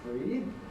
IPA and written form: friːd (freed)